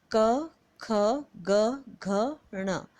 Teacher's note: क ख ग घ ङ कंठव्य स्पर्श व्यंजन कहलाते हैं · कंठ, कंठ से मतलब गले से, ये है क ख ग घ ण, कंठ। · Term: कंठ उच्चारण